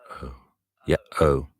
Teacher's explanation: You can feel a slight shift in resonance there. And the lips start from a very neutral position, and end in an O. · It starts in the centre of the mouth and moves backwards.